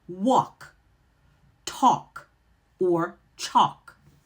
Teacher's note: that L is either going to be silent or barely heard, so it's very unstressed